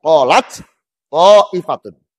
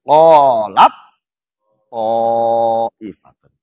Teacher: Karena diidgomkan maka hamasnya hilang.